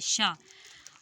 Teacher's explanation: शा में हमारे तालू से हमारी जीभ हमारे मुख के ऊपरी हिस्से तालू से क्या कर रही है? संघर्ष कर रही है शा को बोलने में। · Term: ऊष्म